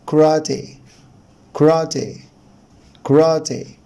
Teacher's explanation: طبعا هنا حرف الاي الاولاني ده بيتنطق شوا، وان الشوا ده بيبقى صوته قصير جدا، هنقولش كاراتي نوت كراتي كراتي.